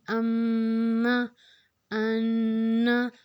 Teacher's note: ہم ان دونوں لفظوں میں ناک میں غنہ کریں گے، ناک میں آواز لے کے تھوڑا اس کو ٹھہرائیں گے، اس کو ہم غنہ کرنا کہتے ہیں۔